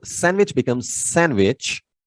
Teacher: the first D disappears in between two consonants